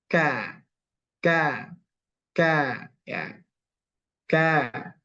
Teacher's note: jadi pangkal lidah ini diturunkan ke bawah sedikit dari tempat keluar huruf Q nah kan menyentuh ee langit-langit yang keras yang lunak mohon maaf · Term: Kaf